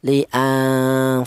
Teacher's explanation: Nun mati ini dibaca samar. Cara bacanya disamarkan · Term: ikhfa